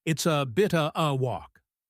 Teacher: The only strong words here are bit and walk. These carry the meaning. · The is contracts to s, of becomes a, and the article a is just a schwa. The only strong words here are bit and walk. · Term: weak form